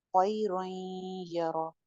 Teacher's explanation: गुन्ना के साथ है नाकिस गुन्ना है